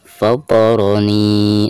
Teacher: ada kasroh nun lalu berhadapan dengan ya sukun, maka dihukumi mad tabi'i dan dibacanya 2 harokat